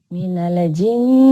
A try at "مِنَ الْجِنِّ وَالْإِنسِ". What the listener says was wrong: Minal dihindari tawalut ya. Minal ya.